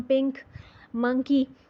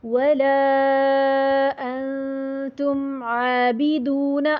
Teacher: زبان نون کی آواز جو ہے وہ ناک سے گزرے گی اور نون کا شائبہ رہے گا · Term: اخفا